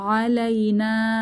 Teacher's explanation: নাতে বড় টান হবে, মাদের সাইন আছে, 3 আলিফ টানবো